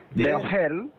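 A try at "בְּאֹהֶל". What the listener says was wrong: Let me hear a full syllable. Be-o-hel. Be-o-hel. Be-o-hel.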